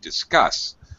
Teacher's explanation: Notice that the unstressed syllable is dis. We have an I sound. Still a short, reduced sound. We got to have this as an I sound because this is a DIS is a prefix.